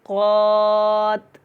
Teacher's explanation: اگر آپ نے وقف کرنا ہے تو یہاں پہ قات ایسے کر کے ادا کریں گے، تا کے نیچے زیر ختم ہو جائے گی